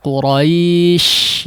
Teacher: huruf shin mungkin tafasyinya yang dominan